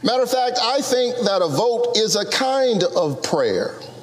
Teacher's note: as a matter of fact becomes shortened and reduced to matter of fact